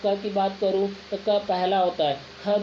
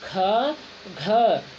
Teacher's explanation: क, ग और अंग इन्हें हम अल्प प्राण कहेंगे, जबकि ख, घ इनको बोलने में समय ज़्यादा लग रहा है, इन्हें हम महाप्राण कहेंगे